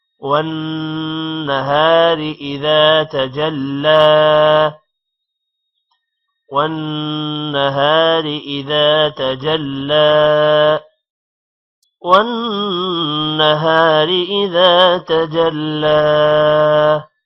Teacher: والنہار نون پر غنہ ہے اور شد بھی ہے جس کی وجہ سے نون ایک بار واو کے ساتھ پڑھا جائے گا اور ایک بار اکیلے سے، اور ہا کے بعد الف ہے اس وجہ سے تھوڑا لمبا کریں گے۔ · والنہار اذا، دال کے بعد الف آ رہا ہے، تھوڑا سا لمبا کریں گے۔ تجلی، تجلی لام پر کھڑی زبر ہے، تھوڑا لمبا ہوگا اور شد کی وجہ سے جیم کے ساتھ ملے گا